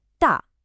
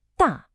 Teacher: the fourth tone on ta. It needs to be a short sharp falling tone. Ta. Almost like you're chopping something.